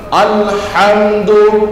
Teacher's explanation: হা এটা কণ্ঠনালীর মধ্যখান থেকে উচ্চারণ হয়, এটাকে যদি আমি কণ্ঠনালীর শেষ ভাগ শুরু থেকে উচ্চারণ করি তাহলে আলহামদু শব্দটির যে অর্থ আল্লাহর প্রশংসা এটা থাকলো না, এটার ব্যাড অর্থ হয়ে যাবে, খারাপ অর্থ হয়ে যাবে, সবচেয়ে পচা কাপড়।